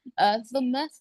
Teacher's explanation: سا کا مخرج زبان کی نوک اوپر نیچے دانتوں کے کناروں کو لگی. میم پہ یہاں پر غنہ کریں گے.